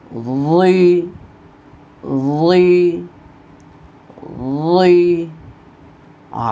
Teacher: জিহ্বার আগা সামনের উপরের 2 দাঁতের আগার সাথে লাগিয়ে মোটা করে উচ্চারণ করতে হবে।